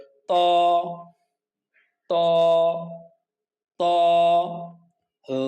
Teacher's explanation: জিহ্বার আগা সামনের উপরের দুই দাঁতের গোড়ার সাথে লাগিয়ে আওয়াজকে মোটা করে এক আলিফ টেনে পড়তে হবে